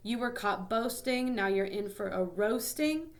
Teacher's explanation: the rhyme stress is on the second to last syllable